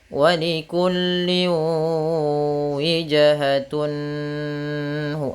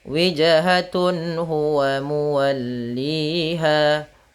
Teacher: Maksudnya apabila ada nun sukun atau an, in un bertemu dengan huruf halqi yaitu huruf tenggorokan salah satunya huruf ha, maka dia harus dibaca dengan jelas suara tanwin atau nunnya dan tidak boleh ditahan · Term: izhar halqi